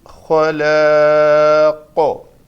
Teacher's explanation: دو زیر والی تنوین ہے، موقوف کیا، اس کو ساکن کر کے صرف قاف کو ساکن پڑھا